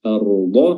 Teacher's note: Naj'alil arda, lamnya di sini lam qamariyah juga izhar jelas, karena bertemu dengan huruf hamzah. Arda, huruf ra-nya tebal, ya, karena sebelumnya dia adalah sukun yang sebelumnya fathah